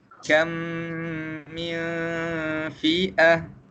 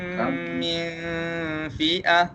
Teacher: Bacaan dia ialah idgham, memasukkan, kemudian kita dengungkan dia dengan dua harakat. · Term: idgham mithlain